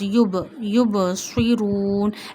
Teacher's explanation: We have to show movement in ba because ba is sakin here. When jazm sign, this dal shaped sign comes on five letters, qaf, ta, ba, jim, dal, then you show clearly movement in these letters. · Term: kalkala letters